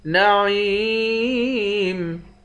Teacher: عین کو یا کے ساتھ ملا کر یا کو ایک الف کے مقدار کھینچیں گے